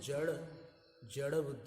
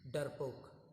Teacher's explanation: हिंदी में ड के नीचे अगर नुक्ता होता है तो ड ऐसा करके थोड़ा सा रोल होती है आवाज़। और अगर नहीं होता तो डर के ड जैसा बोलते हैं, डरपोक।